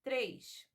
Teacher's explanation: ela não possui i na última sílaba mas na nossa pronúncia é como se tivesse um I três isso é exatamente a ditongação que nós estamos falando e